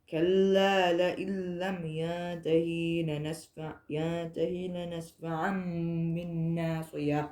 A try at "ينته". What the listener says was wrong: ينتهي And don't stretch the ha. It's just ha kasra.